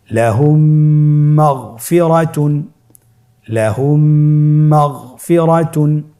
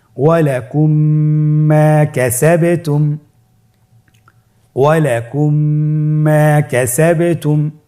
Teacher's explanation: মিম সাকিনকে পরবর্তী মিমের সাথে মিলিয়ে পড়তে হবে গুণনার সহিত।